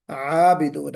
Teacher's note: تو عابدون مجھے محسوس ہوا کہ آپ نے اعبدون پڑھا، پہلے حمزہ ظاہر ہو گیا،